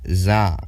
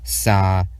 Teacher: voiced and unvoiced alveolar sibilant fricatives, /s/ and /z/